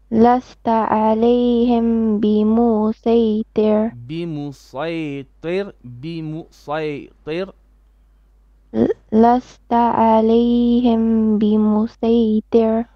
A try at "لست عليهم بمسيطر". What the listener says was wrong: عين on the عليهم.